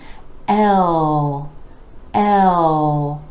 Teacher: start with the vowel sound ah as in red l with the vowel sound rolling into the dark L where the back of the tongue is coming back and down